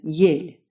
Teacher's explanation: It is basically an E with a slightly higher tongue position. It shows up in IPA as a lowercase e, and since it's a new sound for most English speakers, we'll need to go back to tongue placement to really kind of get it.